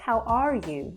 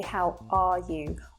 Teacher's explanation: we soften that R sound as opposed to how you hear it in American English, where they would say, how are you?